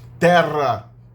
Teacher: o R era pronunciado mais longo do que o R normal